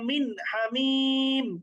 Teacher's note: কোন রকম গুণনা করা যাবে না, কোন রকম অনুস্বরের উচ্চারণ করা যাবে না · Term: ইজহার